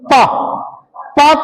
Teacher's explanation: प तभी बोलेगा प बोलने में दोनों होठों का प्रयत्न लगेगा ही लगेगा। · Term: ओष्ठ